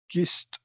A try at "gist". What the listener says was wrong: It's a J sound. No, gist. I didn't know if I heard g or j.